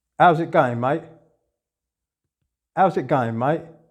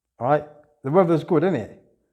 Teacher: Il va vous donner des phrases et vous allez essayer de les retrouver avec son accentuation de londonien. Donc il va y avoir beaucoup de glottal stop